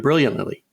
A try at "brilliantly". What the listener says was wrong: You're putting one extra syllable in there.